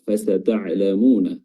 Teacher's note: huruf ain yang betul-betul harus diperjelas keluar dari wasatul halq. Fasata'lamuna, dan huruf mimnya di sini mat tabi'i 2 harakat.